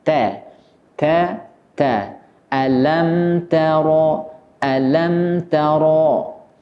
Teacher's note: sebagian besar huruf ta ini memiliki sifat yang tipis, termasuk ketika berharokat fathah juga harus dibaca tipis